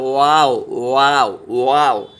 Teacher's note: ये वाव जो है दोनों होंठ गोल